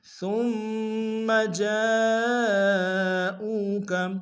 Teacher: جیم کے ساتھ الف مدہ ہے، الف مدہ کے اوپر مد متصل ہے، تین انداز میں کھینچیں گے